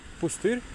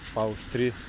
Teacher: очень интересное чередование, когда безударная у переходит в ау